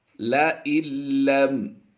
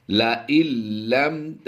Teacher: قالوا إِنَّا تَطَيَّرْنَا بِكُمْ، لَإِلَّمْ نون کی آواز کو ہم سائلنٹ کریں گے، حمزہ نون لام زیر ال، یعنی حمزہ کی آواز کو ہم ڈائریکٹ لام سے ملا دیں گے، نون کی آواز کو سائلنٹ کریں گے